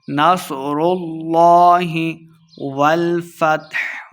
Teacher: نصر اللہ، صاد کو موٹا پڑھنا ہے، را کو لام کے ساتھ جب ملائیں گے تو لفظ اللہ کا لام ہم موٹا کر کے پڑھیں گے